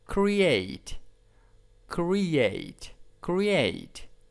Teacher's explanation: stress is in the second syllables